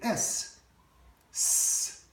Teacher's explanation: if you say s, there's no vibration. So that's unvoiced.